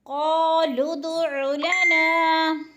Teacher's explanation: قالوا ادع لنا، قالوا قاف موٹے حروف میں سے ہے اور قاف کے اوپر الف مدہ ہے۔ الف خالی سے پہلے قاف کے اوپر زبر ہے، تو الف مدہ ایک الف یا دو حرکات کے برابر کھینچ کر پڑھنا ہے